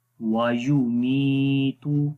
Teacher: میم کو لمبا کریں گے، اس یا کی وجہ سے یا مدہ ہے